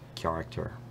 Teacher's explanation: I think it's a velar consonant that's being palatalized, so character.